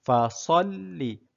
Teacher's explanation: Jadi sad berbunyi tebal